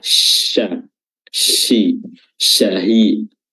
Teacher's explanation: makhrajnya adalah wasatul lisan, bertemu dengan langit-langit atas dan disertai dengan sifat tafasyi, sifat yang membuat udara di atas lidah itu menyebar ke berbagai arah